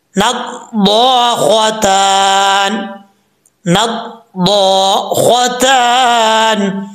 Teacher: خوا بھی حروف مستعلیٰ میں سے، اس کو بھی پر پڑھا جائے گا · نون کو جب ضاد سے ملائیں گے، ضاد حروف مستعلیٰ میں سے ہے، پر پڑھا جائے گا، ایک الف کی مقدار لمبا کیا جائے گا کیونکہ آگے جو ہے وہ الف آ رہا ہے۔